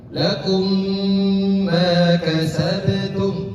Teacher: Jadi lakum ditahan sejenak dua ketukan. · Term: idgham mimi